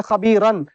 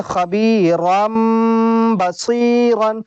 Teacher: حرف با آ رہا ہے یہاں پر، تو اب اس تنوین کو جو ہے ہم میم سے بدل لیں گے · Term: اقلاب